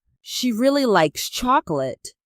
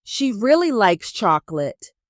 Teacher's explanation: We stress really and chocolate. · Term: word stress